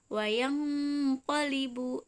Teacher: Nah, ini bertemu huruf qaf, nun sukun bertemu huruf qaf. Ini yang cenderung terdengar, terbaca seperti eng.